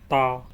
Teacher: ये जबान की नोक को ऊपर के दांतों की जड़ पे लगाने से अदा होगा जैसे ता ये ट नहीं पढ़ना बल्कि त पढ़ना है त